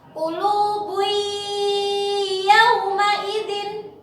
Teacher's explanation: maka itu dibaca melebur, ya, huruf nunnya hilang, ya, melebur ke huruf yang selanjutnya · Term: idgham bi gunnah